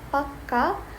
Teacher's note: pakka with a longer K means firm. This longer sound is called a Gemini, and it lasts about twice as long as a normal or single thought.